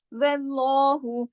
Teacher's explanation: واللہ، اب دیکھیں واو کو موٹا نہیں کیا، ہا کو موٹا نہیں کیا، لفظ اللہ کے لام کو موٹا کیا. واللہ، واو اور ہا باریک لیٹر ہے، صرف لام چونکہ کنڈیشنل ہے، واو پر زبر ہونے کی وجہ سے ہم نے لام کو موٹا کیا